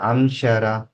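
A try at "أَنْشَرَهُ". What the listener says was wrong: ఇక్కడ ఇక్కడ కొంచెం దీర్ఘం లాగాలి. షరా.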